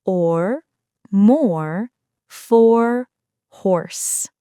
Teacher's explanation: Start with the rounded /ɒ/ sound (as in saw), then pull your tongue back for the R while keeping your lips slightly rounded. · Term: R-colored vowel /ɔːr/, R-colored vowel